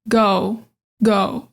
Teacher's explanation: we don't end this word with a consonant. So, it it kind of just does fade out.